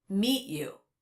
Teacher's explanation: There was no release of the T sound. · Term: stop T